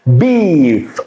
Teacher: B is very plosive, very sharp, and stop